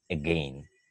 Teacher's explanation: when we pronounce again we barely hear the beginning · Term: schwa